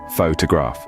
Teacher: In photograph, the stress is on the first syllable